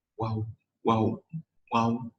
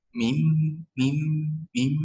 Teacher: Nah, keluarnya itu di antara dua bibir, jadi atas dan bawah. Hanya saja untuk waw bibir membuka, sedangkan untuk ba dan mim bibir itu membungkam